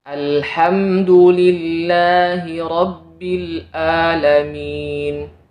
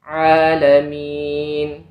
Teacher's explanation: Jangan sampai kita membaca huruf Ain dengan Hamzah alhamdulillahiabbil alamin nah ini keliru yang benar alamin makhrajnya di tengah